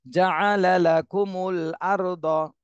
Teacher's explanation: র সাকিন ডাইনে জবর, এখানে র মোটা করে পড়তে হবে